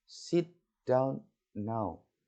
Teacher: sit, down, and now are all stressed. Semuanya ditekan ketika kita ngomong. · And the tone fall on now. Dan nadanya turun.